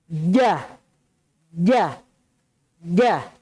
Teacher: Lihat gambarnya itu jim di mana keluar. Tengah lidahnya antum ini naik di atas langit-langit yang keras, yang azmi, yang salbi. Menempel di atas.